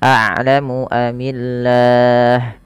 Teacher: Kemudian mim mati bertemu hamzah idhar syafawi, a'lamu amillah. Nah, pada lafal Allah di sini dibaca dengan tipis lamnya, dan juga bisa kita hukumi dengan mad arid disukun bila kita waqaf.